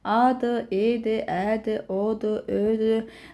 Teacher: Sonra alt çənənin vəziyyətinə görə saitlərimiz var. Alt çənə açıq saitlər var. Yəni çənəmiz düşür aşağı açılır.